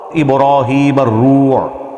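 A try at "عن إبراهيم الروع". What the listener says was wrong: نہیں پتر، را کے اوپر زبر ہے، پیش نہیں ہے. پیش نہ پڑھیں آپ، اس کے اوپر زبر پڑھیں، اس کے اوپر زبر ہے. عن ابراہیم الروع. را زبر دیکھیں آپ، ہجے سنیں، جوڑ سنیں پہلے.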